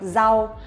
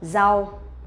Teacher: for vietnamese people when we pronounce the r sound we will not pronounce like r in english but we pronounce like z sound in vietnamese